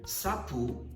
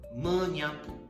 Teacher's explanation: Yeah, for example, like we have sapu, then in the end will become menyapu. So consonant S will be replaced by NY.